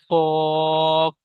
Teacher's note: আরবি ভাষায় পুর বলা হয়, আর বাংলা ভাষায় মুখ গোল করে, মানে মোটা আওয়াজে মুখ গোল করে পড়তে হবে, কফ। তারপরে আচ্ছা, বলেন, ওনাদের নেটওয়ার্কের সমস্যায় বেরিয়ে গিয়েছে।